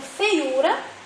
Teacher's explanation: E feiura é uma palavra paroxítona, que quando nós pronunciamos, a intensidade está na penúltima sílaba, o U. Então, por isso que feiura não é acentuado.